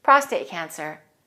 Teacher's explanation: prostate cancer is a compound noun, so we'll stress the first word and we'll link the words.